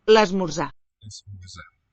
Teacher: And the O written there in the middle syllable. It's a higher sounding oo. So the vowel has raised.